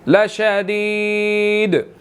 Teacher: دال ساکن ہو جائے گی، یہاں پر قلقلہ ہوگا